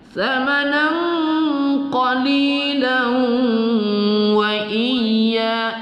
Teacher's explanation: Samanan qalili kita baca satu alif dua harakat. Qalilan, lam berbaris tanwin di atas bertemu waw, idgham bi gunnah atau idgham ma'al gunnah kita dengungkan